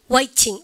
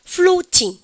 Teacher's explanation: 트 발음에 여러분들 유성음화 시키지 않고 강조해서 그대로 읽는 것이 영국 영어의 첫 번째 특징이에요